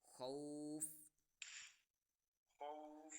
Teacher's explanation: خا واؤ زبر خو، واؤ لین ہو رہی ہے